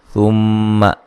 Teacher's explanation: मीम मुशद्दद पे गुन्ना ज़रूरी है।